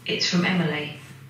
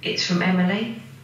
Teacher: the falling pitch of Emily in statements, and also the rising pitch of Emily in questions